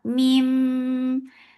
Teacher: This gunna is akmal, so keep the sound in your nose for a longer time.